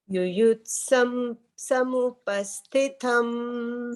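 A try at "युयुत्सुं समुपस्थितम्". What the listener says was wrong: Yuyutsum. Sum ityas. Sam nasti sum.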